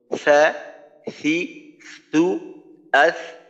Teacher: 5টা সিফতের 4টাই দুর্বল, একটা হলো মধ্যম, আওয়াজ চালু, বাতাস চালু, আওয়াজ পাতলা, জিহ্বার মধ্যখান নিচে, জিহ্বার গোড়াও নিচে, মাখরাজ থেকে স্থিরভাবে উচ্চারিত হবে।